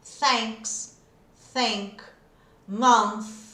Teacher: quer dizer que é esse TH mais soprado